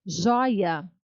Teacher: Joia é uma paroxítona, porque eu vi que jói é a mais forte. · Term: sílaba tônica